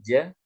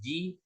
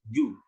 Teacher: makhraj tempat keluarnya huruf Jim ini kita lihat pada gambar bahwasanya huruf Jim ini letaknya ada di bagian lidah bagian atas bagian tengah